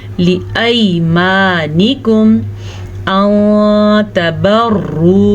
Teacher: इख्फा का कायदा हो रहा है, नून साकिन के बाद ता है इसलिए। तबर्रू, रॉ को पुर पढ़ेंगे, रॉ के ऊपर पेश है इसलिए।